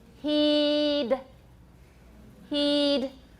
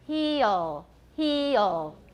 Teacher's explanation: e is pure with the d at the end not so pure with the l at the end